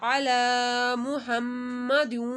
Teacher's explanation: لام کے اوپر کھڑا مادہ ایک الف کے برابر کھینچا جائے گا